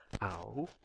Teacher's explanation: you start with the a sound which is not rounded and then you move towards rounding so in the process your lips would be rounding